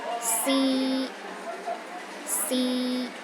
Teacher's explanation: the first tone is high and steady